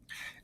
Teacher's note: with the word away we have an unstressed syllable at the beginning and we have a stress because we put more stress on the end of that word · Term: unstressed followed by a stressed